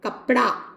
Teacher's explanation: मध्य स्वर उच्चारण में लुप्त दिखाई देता है। जैसे कपड़ा शब्द है, इसका उच्चारण प्राय लोग क्या करते हैं, कपड़ा। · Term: मध्य स्वर लोप